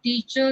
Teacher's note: in British English, the standard Southern British English, R is not pronounced, okay, or it can be pronounced before vowel sounds when it appears in the sentence.